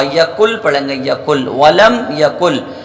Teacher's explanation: نون کو چھوڑ کر لام کو پڑھا جائے گا · نون کی ذرہ برابر بو بھی باقی نہیں رہ رہی ہے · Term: ادغام تام